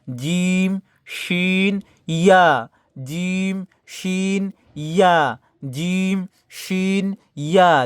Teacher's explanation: জিহ্বার মধ্যখান তার বরাবর তার সঙ্গে লেগে একটু শক্ত করে বলবেন, আওয়াজটা শক্ত করে,